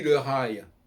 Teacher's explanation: quand on dit le rail, on ne prononce pas le L. Donc ce n'est pas un L qui est censé être prononcé comme un L, c'est un L qui est censé marquer le I.